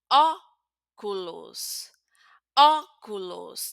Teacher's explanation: Tenemos una O abierta